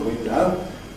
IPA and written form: ˈwɪndʌʊ (window)